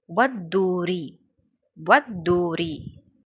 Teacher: வாவுக்கும் துவாவுக்கும் நடுவில் அலிஃப்லாமோட எழுத்து இருக்குது. ஆனால் அந்த அலிஃப்லாமை வெளிப்படையாக உச்சரிக்கக்கூடாது. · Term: ஷம்சியாவோட சட்டம்